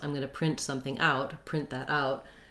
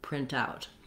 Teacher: And for this one, it depends on if you're talking about a noun, like a printout, something that we printed out, then you're going to stress the first syllable and it'll sound like print out. Or if you're using it as a verb phrase, I'm going to print something out, print that out, then we stress on out. So noun, print out, verb, print out.